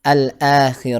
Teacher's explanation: berada di antara lam dengan alif-ya antara lam dengan Alif Macau hamzahnya ada diantara lam dengan Alif maka hamzahnya dibaca panjang